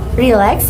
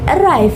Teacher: the stress usually falls on the second syllables. For example, relax in lax and arrive in rive.